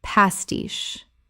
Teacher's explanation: Word 137 pastiche Common mispronunciation pastish Correct pronunciation pastiche Two syllables with the stress on the second.